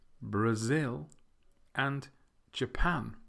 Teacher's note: the last two Brazil and Japan have the stress on the second syllable